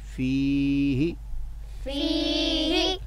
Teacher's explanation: فی کو ہا کی بنسبت ڈبل کریں گے